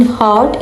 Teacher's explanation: A as in hot is an example for lower vowels.